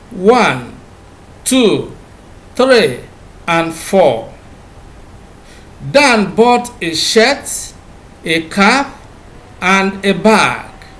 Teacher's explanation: The rising falling tone is used in listing items and also in complex sentences that begin with the subordinate clause.